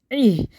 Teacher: عین کو ہا سے ملا کے پڑھیں گے ای، حلق بند کر کے کھولیں ای، یہ نہیں کرنا ہے، ہا نہیں پڑھنا ہے، یہ ہا